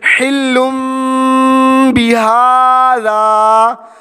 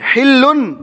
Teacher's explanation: دو پیش کی تنوین کو میم سے بدل کر اخفا کریں گے، ٹھیک ہے؟ جسے حلم بہذا، اب یہ دو پیش کی تنوین ہے، حلن، لام دو پیش لن نہیں ہے، حلم دو پیش کو میم میں بدلیں گے، حلم بہذا، ٹھیک ہے؟ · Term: اقلاب